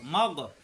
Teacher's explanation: এই গইন কণ্ঠনালী শেষাংশ